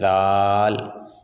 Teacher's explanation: ذال اور ثا ان دونوں کا مخرج بھی ایک ہے